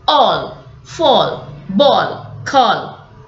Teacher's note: Then the vowel made with the middle tongue elevation is O